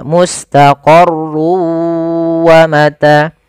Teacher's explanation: masukkan tanwin ke huruf waw sehingga suara n-nya hilang. Tinggal ganti wa, maka mustaqarrun awalnya menjadi mustaqarru karena dia bertemu waw, masuk ke waw. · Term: idgham bi gunnah